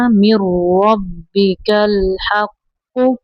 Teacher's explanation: میم کو را کے اندر ملائیں گے